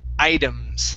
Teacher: that T is going to be a flap T sound or like a D